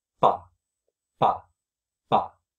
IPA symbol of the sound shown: pa